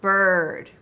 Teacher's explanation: Start with the uh and then blend it with the R. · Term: R coloring